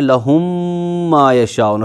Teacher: लेकिन हम इन दोनों को आपस में इनकॉर्पोरेट करते हैं, इनको आपस में इदगाम करते हैं, इन दोनों को आपस में मिला देते हैं, तब दोनों मीमों का एक मीम बन जाता है, दूसरे मीम के ऊपर तजदीद लग जाती है, तो हम पढ़ते हैं लहुम मा यशाऊन।